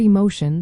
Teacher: in the word emotion, the stress lands on mo · the stress lands on mo before the tion.